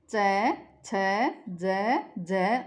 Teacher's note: जिन वर्णों के उच्चारण में जीभ का अगला भाग ऊपर उठकर मसूड़ों व उससे जुड़े हुए तालु का स्पर्श करता है उन्हें तालुवर्त वर्ण कहते हैं